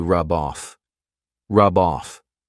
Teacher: off because rub off is a phrasal verb they go together I can take that b sound and connect it to the next word but I have to combine them together I have to say them as one word